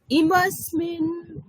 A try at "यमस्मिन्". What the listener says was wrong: না ইয়া আছে ইয়ামাসমিন